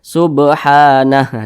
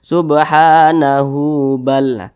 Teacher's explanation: huruf H yang membuat huruf Ha ini berfungsi dibaca panjang begitu Jadi kalau kita berhenti pada huruf ha maka dia dibaca pendek disukunkan